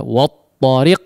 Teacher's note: Tapi peringatan yang lain adalah di huruf waw mungkin ya, di huruf waw ya, jangan di wo bunyinya, difathahkan ya